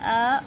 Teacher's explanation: विवृत मतलब वैसा स्वर जिसको बोलने में पूरा मुंह खुले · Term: विवृत स्वर